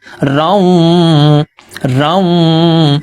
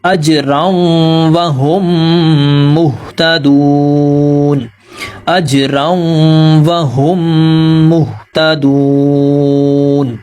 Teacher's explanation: ناک میں تھوڑی دیر آواز کو ہم روکیں گے تو غنہ کی سی آواز پیدا ہوگی۔ اجراؤں وہم، ہا کو ہم میم سے ملائیں گے تو یہاں پر ہم غنہ کریں گے۔